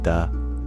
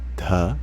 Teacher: the D sound it's the same in in Sanskrit but there's there's four different variants of it there's the unaspirated DU but there's also the aspirated du